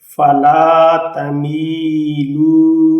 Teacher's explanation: اب اس لام کو بھی لمبا کر کے پڑھا جائے گا، اس یا کو بھی مطلب میم لمبا کر کے پڑھا جائے گا. یہ واو حروف مدہ کی وجہ سے لام کو لمبا کر کے پڑھا جائے گا